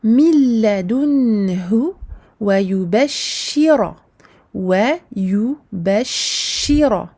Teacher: Attention à bien appuyer sur le shin pour former la shadda. Et attention à emphasiser le ra, encore une fois, qui porte sa fatha.